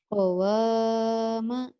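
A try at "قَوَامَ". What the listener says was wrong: Panjang Ki. Qawama. Pak Hari kok panjang? Iya, sebetulnya matob itu cuma satu alif. Tapi karena lagi belajar lagu, digelik-gelik gitu. Sebetulnya cukup ini. Qawama, qawama.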